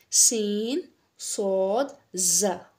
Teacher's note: और ऊपर नीचे के दोनों दांत इसमें शामिल होते हैं और इसका मखर थोड़ा सीटी वाला सीटी की आवाज आएगी